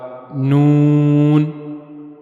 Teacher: उसके लिए जबान का नोक वाला हिस्सा यानी जबान की नोक और ऊपर के अगले दो दांतों के मसूड़े। जबान की नोक जब ऊपर के अगले दो दांतों के मसूड़ों के साथ जाकर मिलेगी तो वहां से नून अदा होगा · जबान की नोक को ऊपर के अगले दो दांतों के मसोड़ों के साथ मिलाना है और वहां से नून अदा होगा। नून। कोशिश करें जबान की नोक को ऊपर के जो अगले दो दांत हैं उनके जो मसूड़े हैं अंदर की तरफ वहां पे रखें।